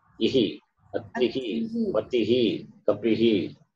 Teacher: Visarga takes a sound of E.